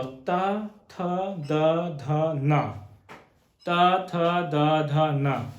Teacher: और ता बोलो, ता, ता जब आप बोलेंगे तो दांतों से आवाज, जो हमारी जीभ है वो दांतों को स्पर्श करते हुए आएगी।